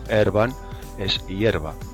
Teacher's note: la E breve diptonga en español en IE